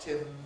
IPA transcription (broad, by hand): ˈtɪm